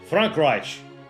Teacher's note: There's a very subtle, like, sh sound at the end. That's also, it's like a sh and a ch.